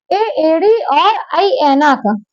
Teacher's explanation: कंठ तालव्य अर्थात कंठ और तालु से मिलकर जो स्वर बनते हैं उन्हें हम कंठ तालव्य स्वर कहते हैं।